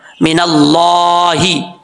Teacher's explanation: अल्लाह के नाम से पहले जबर आ रहा है, अल्लाह का नाम पुर पढ़ा जाएगा, इसको बारीक नहीं पढ़ना